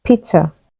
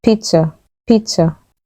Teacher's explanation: The Z gives a ts sound.